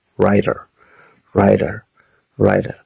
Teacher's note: Ahora, writer o writer con una flap t.